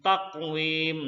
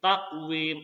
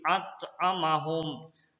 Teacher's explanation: Qalqalah sugra, huruf qalqalah yang mati asli bersukun dibaca terang dan memantul. Bunyi pantulnya kecil di tengah ayat ya.